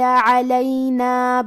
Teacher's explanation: حرف العین کو ہم حلق کے درمیان والے حصے سے پڑھیں گے